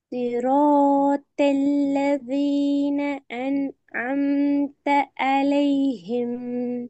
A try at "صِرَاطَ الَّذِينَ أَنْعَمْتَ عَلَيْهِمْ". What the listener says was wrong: எல்லாத்தையும் உடைக்கப்படாது. அந்த சவுண்ட் மட்டும் தான் உடைக்கணும். أنعمت عليهم. صراط الذين أنعمت அந்த ஓதல் பிழை.